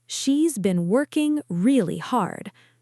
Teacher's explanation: The content words are working, hard. Those get the stress. The function words are she, has, been, really. Those get reduced.